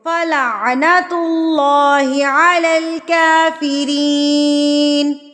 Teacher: کاف کے اوپر کیا ہے؟ کھڑی زبر ہے، تو اس کو ہم نے ایک حرکت کے برابر کھینچنا ہے